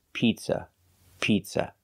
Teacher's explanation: the first vowel is a long e like green beans